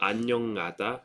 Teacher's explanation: you want that NG sound to go up as if there is basically no H